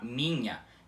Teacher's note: como se o NH na palavra minha do português fosse um N normal e logo em seguida dele um I semivogal pronunciado bem rapidamente